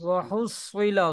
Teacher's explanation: सौद को मोटा करें आप